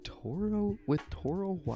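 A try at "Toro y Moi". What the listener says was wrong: Featuring Toro E. Moy. Toro E. No, it's Y, yeah, but in Spanish that's pronounced E.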